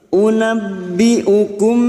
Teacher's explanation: mim sukun bertemu ba Ikhfa Syafawi mim sukun mendengung selama dua atau tiga harakat